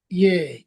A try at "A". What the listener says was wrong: এ না এ, মানে ইয়ার মতন না। এ।